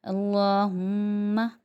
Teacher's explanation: मीम पे हमें रुकना है और दोनों होठों को जमा के रखना है। इसको ये मीम का गुन्ना कहलाते हैं।